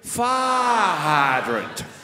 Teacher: And I know you enjoy my voice, and if you want to talk like me, all you have to say is fire hydrant. Now, just stretch out the I sound for as long as you can and hit the T at the end